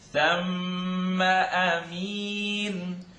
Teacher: And you're not necessarily supposed to press your lips together. Just trying to give you an idea that mim shadda lives in the nose.